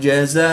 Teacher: الف مدہ کے بعد حمزہ اسی کلمے میں ہے تو یہاں پر مد متصل ہوگی، 3 سے 5 الف تک کھینچ کر پڑھیں گے۔